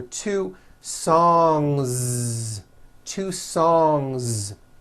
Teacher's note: Song ends with a voiced NG sound. So if you make it plural, don't forget to add a voiced Z ending.